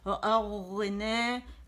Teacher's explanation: رخاوہ ہے، رخاوہ کہتے ہیں آواز کے چلنے کو